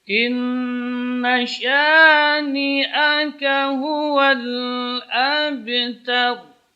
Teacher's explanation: Karena ba yang sukun terdapat di tengah-tengah kalimat. Pantulannya cenderung kepada fathah, kepada harakat sebelumnya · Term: qalqalah sughra